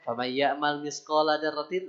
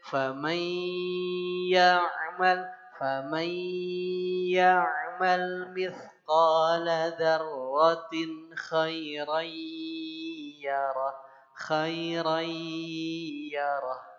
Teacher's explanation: Nun sukun ketemu ya itu idgham bi gunnah. Idgham yang pakai gunnah.